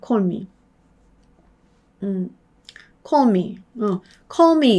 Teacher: call 하고서 혀가 저 앞으로 간다는 걸 느낄 수 있으세요. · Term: L의 발음